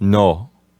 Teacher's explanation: when you say it the correct Spanish way, it sounds as though your mouth is more open